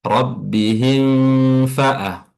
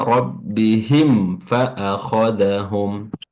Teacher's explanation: langsung dilepas mimnya ketika sudah ee dilafazkan · kita baca jelas huruf mimnya atau dinamakan sebagai izhar syafawi, ya. Izhar jelas yang keluar dari syafah atau bibir.